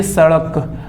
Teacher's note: आपने शब्द कहा उड़ना, आपने जीभ को घुमा दिया। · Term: अड़